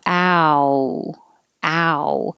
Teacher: The vowel is ow. So you have to start with a and move to oo.